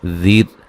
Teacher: را کو باریک پڑھیں گے، وقفاً وصلاً را باریک پڑھی جائے گی